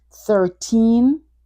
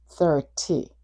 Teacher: Your voice goes up at the end on the teen and your voice goes down at the end on the T.